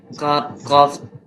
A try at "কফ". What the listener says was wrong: এটা কাপ না, এটা হচ্ছে কফ। কফ জবর ক, সাখি ক,